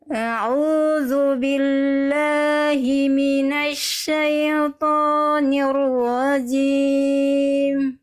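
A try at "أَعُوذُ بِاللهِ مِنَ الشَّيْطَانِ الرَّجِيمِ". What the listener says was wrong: Oke, pada bagian syai pastikan ya sukunnya di sana jelas Bunda. Syai bunyinya i jangan syaito. A'udzu billahi minasyaitonir rajim.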